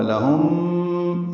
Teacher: لہم، لام جلدی سے ادا کریں گے. میم ساکن کے بعد میم آنے کی وجہ سے ادغام ہے، غنہ ہوگا. لہم، ادغام مثلین، یہ ادغام شفوی ہے.